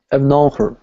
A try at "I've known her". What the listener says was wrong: You would say I've known her. You don't really say the H. If you just always practice this as her, when you come across something like this, you're not going to be able to say it. So you have to practice this phrase, I've known her.